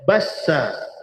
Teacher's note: Bassa sebenarnya hujung lidah menekan pada gusi bawah. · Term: huruf sin